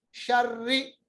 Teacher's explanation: रा को पढ़ते वक्त थोड़ी सी लकनाहट पैदा होती है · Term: तकरीर